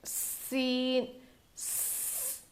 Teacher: तो सीटी जैसी आवाज़ आ रही है ना, इसीलिए इसको सफ़ीर कहा गया है। और ज़ुबान की नोक को नीचे के दांतों के जड़ में लगाने से सीन अदा होता है। इसको हम बिल्कुल बारीक पढ़ेंगे, इसको मोटा नहीं पढ़ना है।